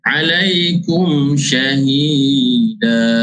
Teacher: Alaikum izhar syafawi, tidak boleh kita dengung menjelaskan huruf mim. Kita kena jelaskan huruf mim itu.